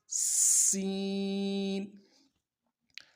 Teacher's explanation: اگلا حرف جو ہے سین، اس کی سیٹی باریک ہوگی، بالکل باریک سیٹی نکلے گی، سیٹی کی طرح ہی نکلے گی، اوپر کے دونوں دانتوں کو ملائیں گے اور دانتوں کے بیچ میں جو خلا ہے وہاں سے ہوا کی شکل میں سیٹی نکلے گی، سین۔ اگلا حرف جو ہے صاد، اس کی سیٹی موٹی ہوگی، باریک سیٹی نہیں نکلے گی، موٹا حرف ہے صاد اور سیٹی بھی موٹی ہوگی۔